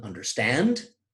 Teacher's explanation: Unstressed, unstressed, stressed, two unstressed syllables followed by a stressed one, as in understand, we have an anapestic foot.